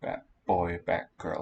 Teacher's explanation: the T and the B fuse into a P